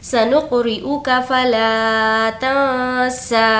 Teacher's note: सनुक़रिउका फ़ला तंसा। यहाँ पर नून की आवाज़ को नाक में छुपाएंगे क्योंकि नून साकिन के बाद सीन है और सीन हुर्फ़ इख़फ़ा के 15 लेटर्स में से है, इसीलिए नून की आवाज़ को नाक में छुपाएंगे।